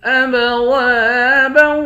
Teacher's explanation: دو زبر کی تنوین میں جب وقف کریں گے تو ایک زبر پڑھا جائے گا، با کو واو کے ساتھ ملا کر پڑھیں گے تو ادغام ہوگا۔